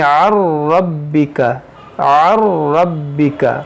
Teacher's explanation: نون ساکن کی آواز نہیں آئے گی، یہ نون ساکن اس را میں داخل ہو جائے گا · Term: ادغام